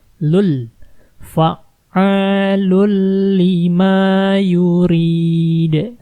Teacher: Jangan dibaca fa'alun, ya. Kata 'lun' di sini sudah hilang.